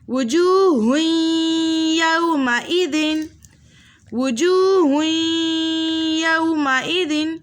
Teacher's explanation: 2 پیش کی تنوین کے بعد ینمو کے متحرک حرفوں میں سے یا آ رہا ہے تو ہم 2 حرکت کی مقدار غنے کے ساتھ پڑھیں گے